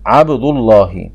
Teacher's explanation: وإذا سبقه ضم أو فتح تغلظ اللام